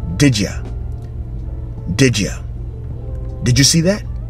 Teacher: there is no space in between between the word did and between the word you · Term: linking words